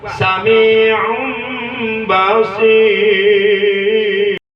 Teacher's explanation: nun sukun yang asalnya berbunyi wajib dirubah ke mim sukun yang berbunyi dan wajib digunakan atau ditahan atau didengungkan. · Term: iklab